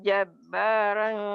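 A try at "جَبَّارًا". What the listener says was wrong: Jabarong, jangan jabarang ya. Ro itu biasa ra, orang-orang Seberang ya. Jabaroro. Di Jawa itu angka 2 tuh loro, ro.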